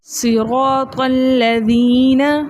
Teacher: اب ہم نے را کو موٹا پڑھا اور را کو موٹا پڑھنے کے ساتھ ساتھ 2 حرکت کی مقدار کھینچ کر پڑھا